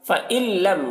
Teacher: نون ساکن کے بعد لام ہے حروف یرملون میں سے، تو نون کو لام سے ملا کر بغیر غنہ کے پڑھیں گے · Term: ادغام تام